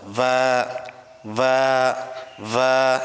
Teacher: আর বা দুই ঠোটের ভিজা অংশ থেকে পড়তে হয়।